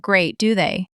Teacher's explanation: Voice falling, he's feeling a shared anxiety.